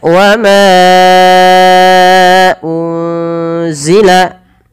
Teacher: ada nun sukun bertemu dengan huruf apa teman-teman? Huruf zai, maka nunnya disamarkan kepada huruf zai.